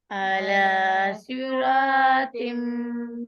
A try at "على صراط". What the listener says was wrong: صاد को पुर कीजिए, रॉ पुर है, तो पुर है, ये पूरा हर लफ्ज जो है ये पुर करके पढ़ा जाएगा।